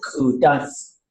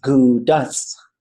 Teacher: this K, this pinched K, this ejective K, becomes a G in some areas. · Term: dialect switch